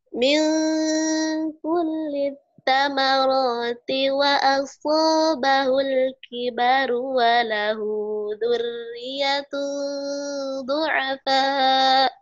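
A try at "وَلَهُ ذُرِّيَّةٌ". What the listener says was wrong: tasjidnya kurang. Walahu zurri, walahu zurri, zurri. Kurang, tasjidnya lagi. Zurri.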